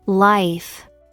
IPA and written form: laɪf (life)